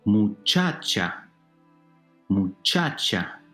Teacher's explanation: These are called llana words or grave words. The second to last syllable is stressed. So instead of being sharp words, they are flat words.